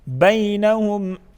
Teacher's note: بی یائی لین جلدی پڑھیں گے اور نرمی کے ساتھ ادا کریں گے